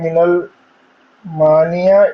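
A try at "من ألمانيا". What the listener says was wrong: हाँ, जहाबा अब्दुल्लाह मिनल मानिया नहीं है, मिन अलग है, अलमानी अलग है।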